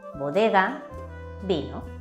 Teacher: En español, la B y la V se pronuncian de manera similar y en la mayoría de los casos se consideran fonéticamente iguales. Ejemplos en el mundo del vino donde podemos encontrar tanto la B como la V: bodega, vino.